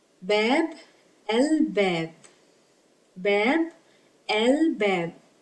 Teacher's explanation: Lam has sukoon and it is pronounced because it is followed by Bab, which is one of the moon letters that make Lam pronounced. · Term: moon lam